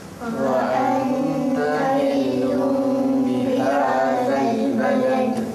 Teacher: Kita bunyi tanwin dua hadapan tu dah tak bunyi lun, dimasukkan kepada, ditukarkan kepada bunyi mim. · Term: iqlab